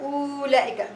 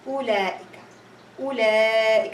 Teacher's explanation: you're going to read it as only 1 haraka as a dhamma.